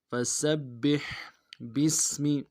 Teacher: سین کی سیٹی باریک ہوگی،